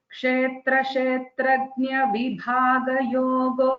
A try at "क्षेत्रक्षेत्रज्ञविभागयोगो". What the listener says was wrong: Is kshetra kshetrajna dvitvam, not kshetra kshetrajna, kshetra kshetrajna.